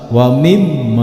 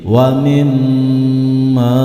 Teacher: tidak boleh disentak dan ditahan beberapa detik atau dua ketukan sampai keluar angin dari hidung tidak boleh disentak wa mim tidak boleh tetapi waminma sampai keluar